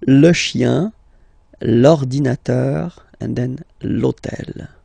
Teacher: this hôtel, okay, because it starts with H, but remember that in French we don't pronounce H, okay, so basically the first sound of the word is the vowel O